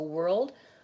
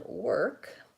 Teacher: the difference is that the end of your word is clear you have a voiced D sound on world and work you have a voiceless K sound